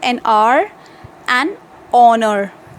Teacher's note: Before a word beginning with a silent H means the word in which H is written, but when we are going to speak, it is silent.